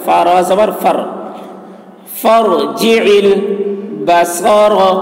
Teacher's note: فا کے اوپر جو الف ہے اس کو نہیں پڑھا جا رہا, فا را سے ملا کر پڑھ رہے